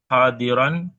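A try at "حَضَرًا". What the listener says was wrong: Kenapa hadiron? Kenapa hadiron? Kan hanya nggak ada alif tuh. Kalau hadiron itu kan berarti wazannya wazan fa'il. Itu wazannya wazan fa'alun. Hadaran, ya.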